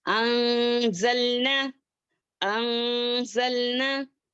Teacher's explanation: اخفا کرتے وقت جو ہے ہماری زبان جو ہے بیچ میں کیا ہوتی ہے لٹکتی رہتی ہے، کہیں پر بھی ٹچ نہیں ہوتا · ہم کو اپنی آواز کو چھپاتے ہوئے پڑھیں گے. ہاں ناک میں چھپاتے ہوئے پڑھیں گے